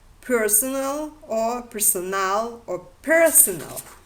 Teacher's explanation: The appearance of the stress on the first syllable is the result of the recessive tendency